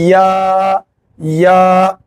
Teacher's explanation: जुबान के बीच का हिस्सा तालू में लगाएंगे।